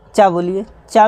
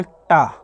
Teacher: बोलिए चा में देखिए जीभ ऊपरी छत से टकरा रही, लेकिन टा, अगर टा बोलेंगे तो तालु के बीचों बीच टकरा रही है